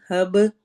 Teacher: ہب میں کلکلا کرنا ہے، تو اس میں ایکو ساؤنڈ ہوگی یعنی آواز ہلے گی